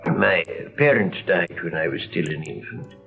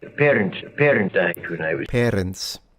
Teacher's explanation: A definite trilled R. Once again, a characteristic of old school accents.